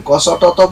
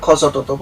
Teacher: ক উচ্চারণ করতে প্রাণের অল্পই কষ্ট হয়। কিন্তু খ উচ্চারণ করতে প্রাণের মহাকষ্ট হয়। ক উচ্চারণ করতে প্রাণের অল্প কষ্ট হয় তার তাই এর নাম হল অল্প প্রাণ।